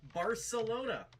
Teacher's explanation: according to natives is indeed pronounced with a s sound rather than a th sound